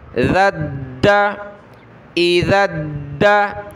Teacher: اس ذال کو دال کے ساتھ ملانا ہے، دونوں میں سے سخت دال کو پڑھنا ہے، اس کے اوپر تشدید ہے، اس کو سخت نہیں کرنا، ٹھیک ہے.